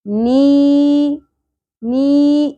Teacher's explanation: نی ایک الف کے برابر کھینچیں گے، حرف مدہ ہے